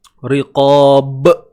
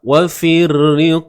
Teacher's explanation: Di hujung tu ada qalqalah kubra. Qalqalah kubra. Lantunan.